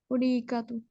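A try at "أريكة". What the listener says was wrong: हाँ, अरीका, ठीक है, ये अरीका, इसको अरीका कर दो, ए कर दो।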